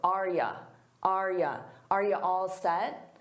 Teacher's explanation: I said, "Are you all set?" Notice that the U becomes more of an unstressed ya or ya.